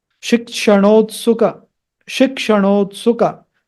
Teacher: Na is retroflex. N with the dot below.